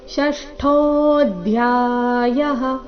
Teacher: ಷಷ್ಠೋ ಇಲ್ಲಿ ಠೋ ಮಹಾಪ್ರಾಣ ದೀರ್ಘ, ಟೋ ಬೇಡ, ಠೋ ಎಂದು ಬರಬೇಕು.